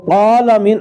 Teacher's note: یہ تو عین تو خیر نکلتی نہیں ہے، عام طور الحمدللہ رب العالمین، عالمین پڑھتے، وہ اللہ کے بندے عالمین نہیں بلکہ عالمین، آ اور آ، یہ یہ حمزہ تو ہے نہیں ہے، نہ الف ہے اس میں، یہ وسط حلق اس کا مخرج ہے عین کا، تو عالمین، عین جو ہے اپنے مخرج سے ادا ہو جائے گی۔